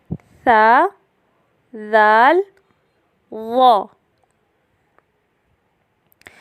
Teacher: زبان کی باریک نوک یعنی رأس اللسان جب ثنایا علیہ اور ثنایا سفلی کے درمیان دبتی ہے تو 3 حروف ادا ہوتے ہیں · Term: حروف لثویہ